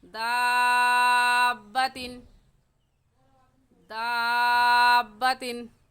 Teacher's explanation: اور آخری بات سمجھنے والی یہ ہے کہ تنوین کے بعد حروف ہلکی حمزہ ہا، عین ہا، غین خا، اور حروف یرملون لام اور غا میں سے ہا آ گیا ہے، حروف ہلکی میں سے ہا آ گیا ہے، اس وجہ سے اس تنوین کے بعد ہم غنہ نہیں کریں گے اور ایسے پڑھیں گے دابتن، دابتن، وقفن دابہ۔